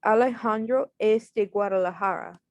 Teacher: So you just make it sound like a question. So at the end of the sentence, just like raise your voice. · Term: rising intonation